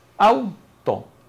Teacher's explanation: ambas vocales deben unirse y generar una sola sílaba